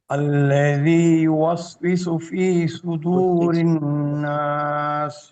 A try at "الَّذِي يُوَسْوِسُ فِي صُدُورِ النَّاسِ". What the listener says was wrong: Masha Allah, very good.